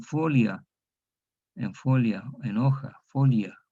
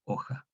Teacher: Porque la yod cerró, impidió que diptongara esa O en UE. Entonces, de O abierta se cerró en O cerrada, y la O cerrada no diptonga.